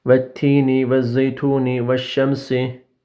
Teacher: lam-ı tarifin lamı kendisinden sonra gelen şemsi harfe tamamen idgam edilir. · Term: idgam-ı şemsiye